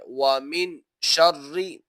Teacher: نون ساکن ہے اور شین حروف اخفا میں سے ہے تو یہاں پر غنہ کر کے پڑھا جائے گا، اور آگے را جو کہ 3 دندانوں والی شکل ہے مشدد ہو جائے گا تو را کو دبا کر پڑھا جائے گا۔